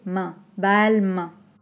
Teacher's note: C'est une voyelle nasale. Donc attention à bien utiliser l'air qui sort du nez.